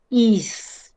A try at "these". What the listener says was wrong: And a sharp z. Your throat needs to vibrate. It's not voiced. We need a voiced z. Z.